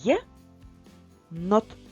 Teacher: буква є на початку слова і на початку складу завжди буде позначати два звуки й е